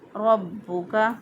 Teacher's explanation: با کو مضبوطی اور قوت کے ساتھ را کے ساتھ ملا کر پڑھا۔